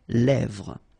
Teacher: Same thing here, final S not pronounced, and then this E accent grave here, it gives you the E, really open sound